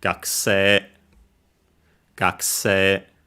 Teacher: For most speakers, there are some who still keep it as written, so AE, with maybe just a somewhat shorter E, but that's a detail. But most standard speakers now pronounce it as double, long E. So an AE combination, doesn't matter again if there's a consonant before it or not, becomes long E, gakse, gakse.